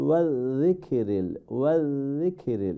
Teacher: এখানে জালটা লাইট হবে, ছোটো কাফটা লাইট হবে